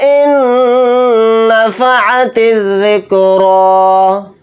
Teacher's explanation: تا کو ذال کے ساتھ ملا کر پڑھیں گے، الف لام نہیں پڑھے جائیں گے